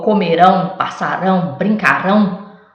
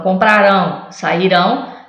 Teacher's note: a última sílaba é que é forte, então é oxítona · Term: última sílaba tônica